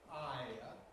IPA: ˈaɪə